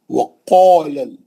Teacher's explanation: پہلا واو گول ہونٹ کر کے منہ سے دور جا کے. وقال گول منہ سے خا پڑھیں گے.